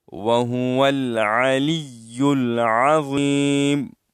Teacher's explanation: زا نہیں ہے، یہ ضا ہے. ضا موٹی ادا کی جاتی ہے، موٹی پڑھی جاتی ہے.